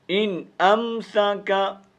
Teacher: یہاں پر نون ساکن کا اظہار ہوگا، یعنی نون کو واضح کر کے پڑھیں